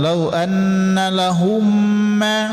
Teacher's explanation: memasukkan suara mim yang pertama, mim sukun, ke mim bertasydid ya, mim selanjutnya. Nah, berdengung. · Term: idgham mimi